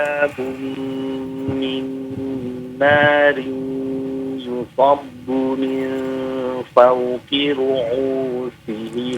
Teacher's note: Panjang, hamzahnya panjang, 2 harokat.